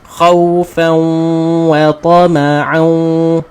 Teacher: Idgham masukkan kemudian barulah kita tarik. Jadikan dengung dua harakat.